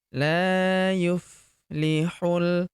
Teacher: huruf la kita panjangkan dua harakat karena terdapat tanda alif di depannya · huruf hu langsung lompat masuk ke huruf lam yang berharokat sukun. Langsung masuk ke sini, alifnya tidak dibaca atau dianggap tidak ada.